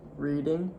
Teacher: Your tongue was way back in your throat.